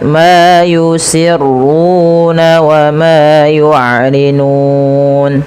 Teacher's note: di sini kita boleh memanjangkan antara 2 harakat, 4 harakat atau 6 harakat karena dia ada bacaan mad arid disukun